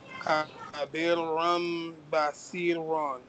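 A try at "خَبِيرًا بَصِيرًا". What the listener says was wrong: This is ya madda here. So you better elongate it. Khabiram basiran.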